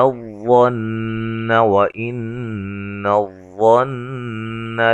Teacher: نون مشدد پہ غنہ ہے